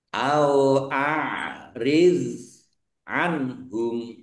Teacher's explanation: do sukun jangan dipantulkan ya bukan qalqalah